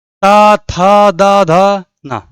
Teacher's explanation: आपकी जीभ जब तक दांत में टच नहीं करेगी आप ता वर्ग का कोई भी अक्षर नहीं बोल पाओगे